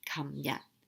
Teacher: So yesterday is 琴日. Both are low tones.